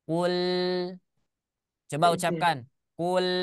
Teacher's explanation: ketika kita mengucapkan huruf lam, maka lidah kita menempel, set, ya, makhrajnya tertahan tapi suaranya terus mengalir.